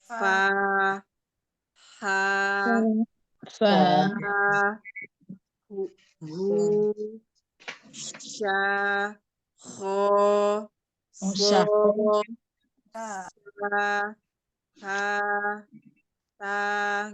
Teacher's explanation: Dia pengucapan hurufnya disertai dengan mengalirnya nafas karena lemahnya makhraj. Jadi makhrajnya ini dia lemah, makanya dia kayak ada fa, kan kalau kita nyebutkan fa, jadi ada aliran nafas juga yang keluar kan. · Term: hams